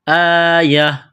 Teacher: جب وقف کریں گے تو گول تا کو ہا سے تبدیل کریں گے